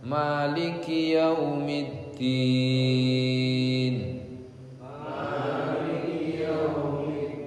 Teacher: Maliki juga nggak boleh maliki panjangan. Maliki 2 harakat saja.